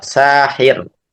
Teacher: Jadi kalau kita waqaf sahir maka dibaca tipis sakinatun qoblaha maksur karena r-nya kita sukunkan dan sebelumnya kasrah. Adapun kalau kita baca lanjut sahirun ya, maka tafkhim karena rnya berharakat dommah. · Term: tarqik waqfan